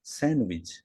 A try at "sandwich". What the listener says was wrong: There's no D. You don't pronounce the D. You say sandwich. Yes, you say sandwich.